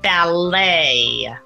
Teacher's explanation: final T when you're writing it, but we don't pronounce that final T.